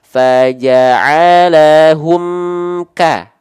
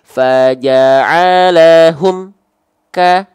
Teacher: suaranya ini pun enggak boleh contoh misalnya seperti ini faalahum ka antara bunyi am dan bunyi ka tak boleh ada Jedah Ning ya sekali lagi lag bunyi antara M dengan ka tak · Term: Idhar syafawi